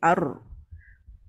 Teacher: Roh ni dia ada ekor suara tapi sangat sedikit. Yang lebih tu adalah getaran saja.